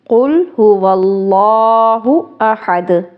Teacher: اب دال جو ہے حروف قلقلہ میں سے ہے، جب اس کو ساکن کرتے ہیں تو پھر اس کو قلقلہ کرنا ہے